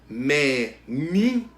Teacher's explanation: O nin é a penúltima sílaba. Então ela é a sílaba tônica. O nin é a penúltima.